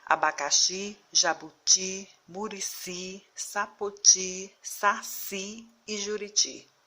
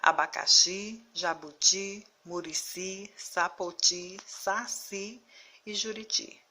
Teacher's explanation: a sílaba tônica ou seja a sílaba mais forte da palavra é a última